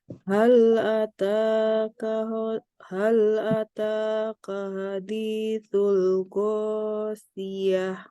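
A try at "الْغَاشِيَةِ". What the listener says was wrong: Ghasyiyah. Syinya tebal. Ghasyiyah.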